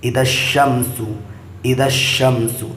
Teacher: دیکھیے الف اور لام دونوں آیا ہے لیکن شین آیا ہوا ہے حروف شمسی میں سے، جس کی وجہ سے الف لام نہیں پڑھا جا رہا ہے، شین پڑھا جا رہا ہے۔